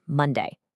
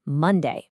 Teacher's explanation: 2 syllables, mon, day. The first syllable is the stressed one.